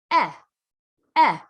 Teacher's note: the jaw is neutral and relaxed your tongue is in the middle of your mouth and it doesn't drop down